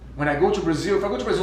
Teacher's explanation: uma das únicas coisas que ainda o entregue como brasileiro é que ele não usou o schwa, o som na palavra to, ou seja, to.